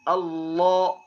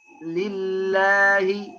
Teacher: Waktu lam tebal lidah yang di belakang tinggi.